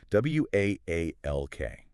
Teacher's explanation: Really stretching that aw sound.